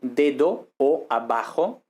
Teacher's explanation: realizaciones oclusivas del fonema b y de d intervocálica